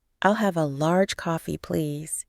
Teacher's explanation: she made sure to pronounce please with a z sound at the end not the S sound she was used to